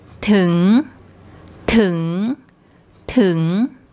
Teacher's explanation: Because it ends with an NG sound, that's a live syllable. So a high class initial consonant and a live syllable gives a rising tone.